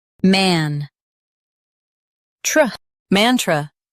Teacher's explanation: Stress man and keep tr soft.